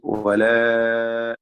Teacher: വലാ അലിഫിന്റെ ദീർഘം മദ് മുൻഫസിൽ ജായിസാണ്